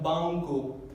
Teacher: en la parte de atrás de la garganta, en la parte velar. Y como en la palabra española banco, ese sonido en la mitad, banco, es este sonido. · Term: sonido velar